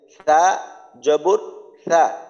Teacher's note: সার মাখরাজ জিহ্বার আগা সামনের উপরের দুই দাঁতের আগার সঙ্গে লাগাইয়া